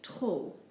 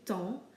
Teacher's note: We don't pronounce the P or the S, we just simply say temps.